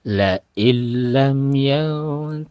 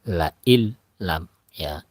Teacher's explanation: nunnya dilebur ke dalam huruf lam langsung ke dalam huruf lam tidak dipanjangkan langsung namanya idgham Bila gunah masuk atau melebur Nun ke dalam